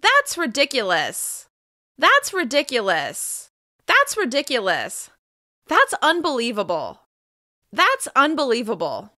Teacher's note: As you can hear, there's a lot of emotion behind these words. Your pitch will change a lot, but you'll end with falling intonation.